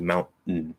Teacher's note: You can just do a straight glottal, and it'll sound like a stop T, and so that allows us to be open to go into the I and then the N, or you can just go straight into the T and drop the vowel and do mountain, just like ridden, mountain, ridden.